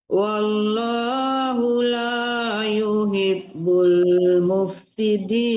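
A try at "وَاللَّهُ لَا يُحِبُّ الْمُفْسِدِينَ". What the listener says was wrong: Yuhib itu hak kecil ya, jangan yuhib ya. Dilatih-latih membaca hak kecil, jangan dibiasain hak kecil disamakan dengan hak besar. Wallahu la yuhibbul mufsidin.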